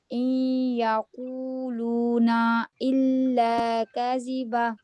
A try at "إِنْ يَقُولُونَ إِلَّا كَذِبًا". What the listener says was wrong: کذبا اس کو زیادہ اسٹریچ اب وہ کیوں اب اس کو ٹو سے زیادہ کیوں اسٹریچ کر سکتے ہیں؟ یہ مد